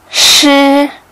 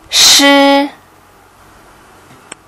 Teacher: เสียงชือเป็นพยัญชนะเสียงเสษแทรกม้วนลิ้นไม่ก้องเพดานอ่อนจะติดกับผนังคอ ปลายลิ้นเราจะงอและเคลื่อนเข้ามาใกล้บริเวณหลังปุ่มเหงือกในระยะยะที่มีช่องว่างเล็กๆนะคะขณะออกเสียงกระแสลมจะผันผวนลมเนี่ยจะแทรกออกมาทางช่องว่างนั่นเองและทิศทางของลมจะออกมาทางช่องปากแนวกลางเหนือลิ้นเสียงนี้เป็นเสียงไม่ก้องดังนั้นเส้นเสียงไม่สั่นนะคะลองออกเสียงด้วยกันนะคะชืออีกครั้งนะคะชือเดี๋ยวเรามาดูความแตกต่างระหว่างการออกเสียงชึในภาษาจีนและเสียงซอโซ่ในภาษาไทยนะคะเสียงซือ